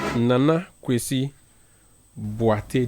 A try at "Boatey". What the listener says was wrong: The emphasis is not on the A.